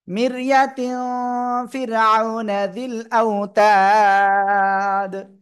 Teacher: আউনা, এখানে তাড়াতাড়ি পড়তে হবে। জিল আউতাদ, এখানে তিন আলিফ টান আর অক্ফ করলে দাল সাকিন কলকলা হবে।